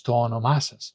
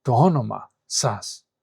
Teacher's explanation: But if you say to onomasas, then you have an stressed syllable, an unstressed syllable, a stressed syllable, an unstressed syllable, which is much more rhythmic and much more easy to pronounce.